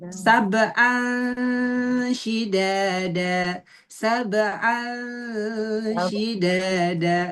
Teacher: nunnya enggak begitu ee ketara, enggak begitu jelas, tapi siap-siap si ujung lidah udah mau ke syin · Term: ausat